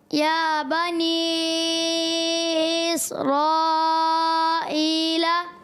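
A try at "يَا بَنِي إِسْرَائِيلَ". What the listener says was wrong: غلط ہو گیا ہے، یا بنی اس حمزہ کو آپ نے تحقیق سے پڑھنا ہے، خوب واضح کریں، یا بنی اسرائیل،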